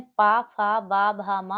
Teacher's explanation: जिन व्यंजनों के उच्चारण में दोनों ओष्ठों द्वारा श्वास का अवरोध होता है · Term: ओष्ठ्य व्यंजन